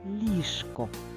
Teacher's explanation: тож і в слові ліжко хоч і чуємо ш а будемо писати ж